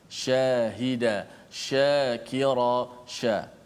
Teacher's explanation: shin makhraj dia adalah di tengah lidah, fokusnya di tengah lidah. Sebagaimana setengah orang dia bila sebut shin, dia banyak menekankan pada bibir, dia melampau sedikit, walaupun bibir tetap bergerak ke depan tapi bergerak secara fitrah, bukan fokus di mulut. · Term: tafasyi